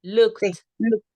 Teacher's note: Siempre pronuncio la K, pero agrego la T.